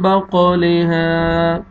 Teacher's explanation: last میں الف مد ہے، الف سے پہلے زبر ہے، ہا کو آپ نے کھینچنا ہے